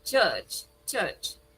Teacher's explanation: The R over there in church is silent. So you only have cha, cha.